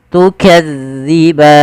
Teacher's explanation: Harusnya tukadzi, za, zi tipis zalnya, tu tidak ada desis